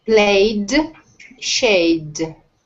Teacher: they ended that d sound not a t